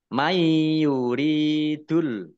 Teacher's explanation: nun sukun bertemu dengan huruf ya bacaan Idgham bighunah masuk dengan mendengung